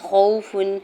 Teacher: خوف، واو ساکن سے پہلے خو کے اوپر زبر ہے، خو بھی حرف مستعلیہ میں سے ہے تو اس کو پر پڑھیں گے اور وہ یہاں پہ واولین ہو رہا ہے، نرمی سے موڑتے ہوئے ادا کرنا ہے بغیر کھینچے ہوئے